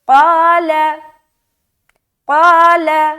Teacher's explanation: قا کو موٹا رکھ رہے تو الف بھی موٹا ہوگا